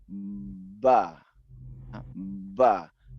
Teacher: Ana berbicara ba begitu lepasnya bibir dari ee masing-masing mereka ya karena ada dua belah bibir maka terjadilah suara ba ya dengan dorongan udara